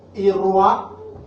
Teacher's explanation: the U is low, so the A has a high tone